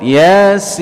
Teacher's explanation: huruf ya dua harakat, sedangkan sin mad lazim di sini 6 harakat